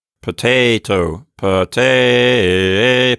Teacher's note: that's a pretty good rise of pitch from the first syllable to the second syllable